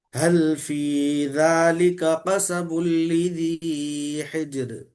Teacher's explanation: ذالکا میں کاف کھینچے گیا، کاف جلدی پڑھنا ہے